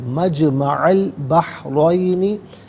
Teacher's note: حتی ابلغ مجمع البحرین، مجمع میں عین پر زبر، اس سے البحرین کی لام ساکن کے ساتھ ملائیں گے، درمیان میں سے الف انی حمزہ کو حذف کیا جائے گا، را پر زبر ہے، را کو پر کر کے پڑھیں گے